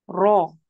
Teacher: Sekali aja ya. Getarannya sekali.